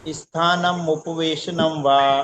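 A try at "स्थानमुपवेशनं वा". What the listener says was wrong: स्थानम नहीं स्थान, नाम में रुक जाना, मुपवेशनम वा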